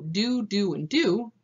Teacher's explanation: yod dropping, that's the deletion of the y sound from certain syllable clusters